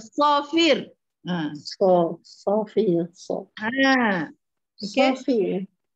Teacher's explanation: Kita sebut so pun tak ada muncung. Bibir pun tak bergerak. Yang bergerak ialah lidah saja. Sebab dia huruf lidah.